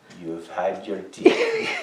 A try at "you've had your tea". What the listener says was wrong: You've had your tea. You do not pronounce the H, it's you. Had your tea.